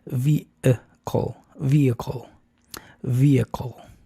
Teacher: Entonces, esta palabra no es vehicle, es vehicle. Después de V viene la schwa.